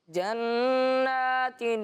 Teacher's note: اس طرح پڑھیں کہ نون مشدد میں غنہ ہو